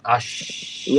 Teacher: terakhir syin dari tengah lidah